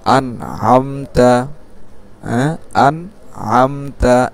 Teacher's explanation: নুন সাকিনকে গুন্না ছাড়া স্পষ্ট করে পড়তে হবে, যেহেতু ইজহারের হরফ পরে আসছে।